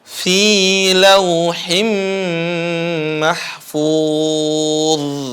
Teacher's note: Karena waqaf, ya. Dha-nya dialirin, bukan dikalqalahin. Enggak qalqalah, bukan dipantulin.